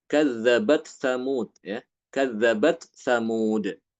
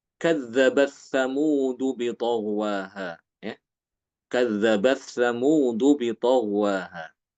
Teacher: Imam Ibnu Amir ya baik Hisham maupun Ibnu Dakwan dia mengidghamkan ta ini ke dalam sa. Jadi bacanya kadzabat Tsamudu bi taghwaha ya.